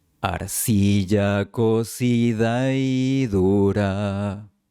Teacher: la A de cocida forma diptongo con la siguiente I.